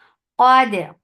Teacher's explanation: Qaf is heavy for fatha open jaws attached with dal. Dal will get sifa of qalqala. Khara. Kha will be heavy.